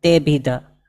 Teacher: અવગ્રહ નું કોઈ ઉચ્ચારણ નથી હોતું આ તેને લંબાવાનું નથી હોતું અને ડ પણ નથી બોલવાનું પણ તે ભી ધ આ રીતે જ બોલવાનું છે આ વીડિયોની